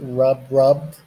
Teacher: We have soft consonant ending. We add ed, pronounced like a D.